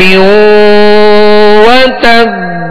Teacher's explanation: ادا ہو اور با کی آواز جو ہے لوٹ کر آئے یعنی اس میں جنبش ہو